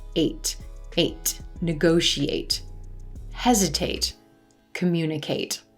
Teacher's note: you can distinctly hear the a as in gray vowel sound in these word endings